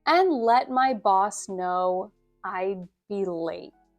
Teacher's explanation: I'd be late goes down in inflection.